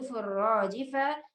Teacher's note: आयत नंबर 6, या वाउ ज़बर यौ, मीम ज़बर मा, यौमा, तहरा ज़बर तरु, जिम पेश जू तरुजू। यहाँ पर हर्फ रा को हमें मोटा पढ़ना है